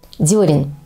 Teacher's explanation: гласное в первом слоге этого слова не «е», а «ё»